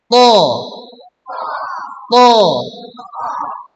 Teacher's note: huruf to ini pangkal lidahnya harus naik. Jadi bunyinya lebih tebal dibandingkan huruf ta.